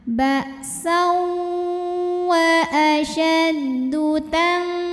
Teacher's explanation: Berikutnya ada hukum ikhfa ab'ad karena nun sukun menghadapi kaf, maka nun sukun bunyinya samar-samar, siap-siap menuju huruf kaf disertai bunyi dengung ang ya. Jadi ini ikhfa yang paling ang ya, karena huruf kaf makhrajnya jauh di belakang di pangkal lidah ya.